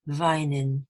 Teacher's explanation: So we make a liaison between the n of vine and the vowel of in. So n and in becomes nin, vine in.